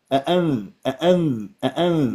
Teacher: مشكله بالاخفاء لازم تصحح ميكانيكيه الاخفاء حتى تطلع سليمه شوف شوف الغي الغنه تماما واربط لي راس النون الساكنه بالذال